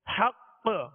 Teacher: مشدد حرف جب اس پر وقف کیا جائے تو اس میں خوب قلقلہ ظاہر ہوگا، آواز جو ہے زیادہ لوٹتی ہوئی محسوس ہوگی